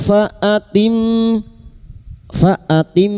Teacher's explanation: Mim yang bertasdid gunna musyadah. Kita dengungkan selama tiga harakat.